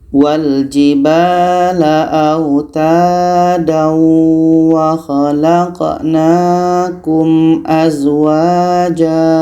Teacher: Pertemuan A*tanwin* dengan a*waw* mengikuti aturan *idgham bighunah*. Kita menasalisasikan bunyi *tanwin* saat memasuki huruf *waw*. Kita mengucapkannya dengan nada sengau selama dua ketukan.